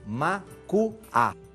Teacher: Veja, inicialmente o L intervocálico, ou o som L intervocálico, sofre síncope, desaparece